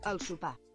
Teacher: And you don't say the R, it's al super.